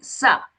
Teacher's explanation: it becomes a dental sa because my tip of the tongue is touching the back of the teeth